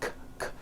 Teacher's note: Break ends with an unvoiced K sound. K, k. There's no voicing on that K. So when you put the word in the third person, he breaks, the S you add also remains unvoiced.